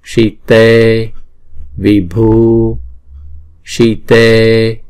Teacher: chữ si là một nhịp thôi, chữ t là hai nhịp.